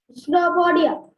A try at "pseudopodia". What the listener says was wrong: Pseudopodia. We don't pronounce that P. That's pseudopodia.